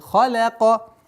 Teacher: Лям мягкое произношение. Халака нет. Халяка.